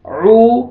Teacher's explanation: قل اعو، عو، عین کو صحیح ادا کرنا ہے، عو، واو مد ہے، آپ نے عین کو کھینچنا ہے، واو سکون سے پہلے ضم ہے۔